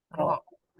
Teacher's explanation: ro itu lebih dekat dengan gusi atas, gusi atasnya gigi seri atas.